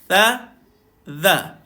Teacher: Cara dia adalah lidah tuan-tuan kena duduk dekat bawah gigi atas.